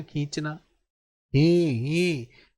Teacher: देखो मुख और नाक दोनों से ध्वनि आ रही है ना, ये ध्यान रखना। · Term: चंद्र बिंदु